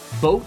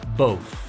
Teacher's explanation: ¿Escuchas la diferencia entre la T fuerte y la TH?